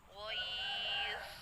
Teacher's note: Jadi ketika baca waqafnya, posisi bibirnya moncong ya, karena dha huruf tafkhim. Ghoiz. Jadi posisi bibirnya moncong.